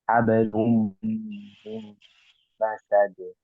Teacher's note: Itu ada idgham di gunnahnya. Jadi tahan dulu 2 sampai 3 harokat.